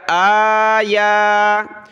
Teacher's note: حمزہ کھڑا زبر آ، یا کھڑا زبر یا، ایک ایک الف کی لمٹ میں دونوں کو کھینچا